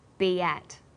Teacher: B ends with the vowel sound E, and at begins with vowel a. Linking these words together with the y sound, we have be at.